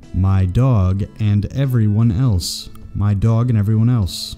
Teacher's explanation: In speaking, and is almost always pronounced as n. The n sound links two words.